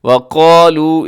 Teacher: اس میں قاف موٹا ہے، لام کے جو واو مدہ ہے یہاں پہ، وقالوا برابر برابر اس کو لمبا کیجیے گا